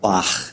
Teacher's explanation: So words in the Anglo-Saxon language that had the H sound had a hard sound like what you just saw here. Now, the voiceless velar fricative, just in case you don't know, is simply a rasp in the back of your throat